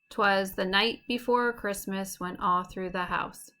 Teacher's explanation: This foot of poetry is made up of 3 syllables, 2 unstressed syllables followed by a stressed syllable, so da-da-dum. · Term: anapest